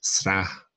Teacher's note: Something that crops up in place names, Strath, Strathblane, Strathclyde, Sra, and there's no T in the Gaelic spelling of that, although there is a bit of a T sound between the S and the R